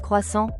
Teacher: avec une terminaison nasale douce